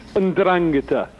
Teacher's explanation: You put the stress on the second syllable.